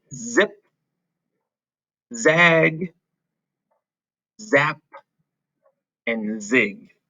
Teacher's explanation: this is a voiced consonant sound we are using our voice when we say z